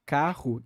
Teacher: Agora, o R, quando ele não é só um tap, quando é uma palavra, por exemplo, carro, que aí tem dois R's ali, aí tem uma prolongação do R, ele vai ser feito, ainda apicoveolar no espanhol, só que ele vai ser feito com vários taps